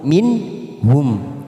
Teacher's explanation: nun sukun bertemu ha Idhar halq kita baca jelas tanpa mendengung